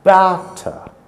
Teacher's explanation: first syllable which is stretched and the second syllable is unstressed the stress is on the first syllable it's a trochee